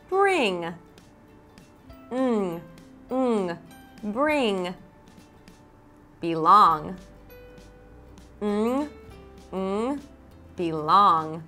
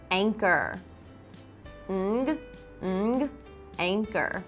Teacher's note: Ng is made by putting your tongue at the roof of your mouth behind the teeth and making a nasal sound. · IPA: /ŋ/